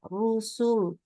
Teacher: Rusul, itu lamnya nggak boleh naikin pangkal lidah. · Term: Lam di belakang harus tipis